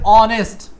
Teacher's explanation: এখানে এইচ এর উচ্চারণ নাই, সরাসরি কি দিয়ে উচ্চারণ হয়েছে? অ দিয়ে শুরু হয়েছে